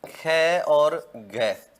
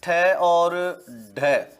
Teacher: तो जो महाप्राण वर्ण होंगे उनमें है आ जाएगा, मतलब एच का प्रयोग होगा।